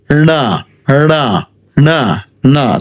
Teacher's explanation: ট যেখান থেকে উচ্চারণ হয় সেখান থেকে ন বলছি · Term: মূর্ধন্য